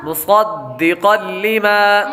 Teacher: آگے قاف پر تنوین ہے، تنوین کے بعد لام حروف یرملون میں سے آ رہا ہے، اس لیے غنہ نہیں کریں گے